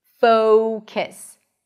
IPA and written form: foʊkəs (focus)